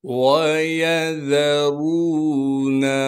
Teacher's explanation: را کے بعد واو مدہ موجود ہے، لہٰذا را کو اب 1 الف کے مقدار کھینچیں گے۔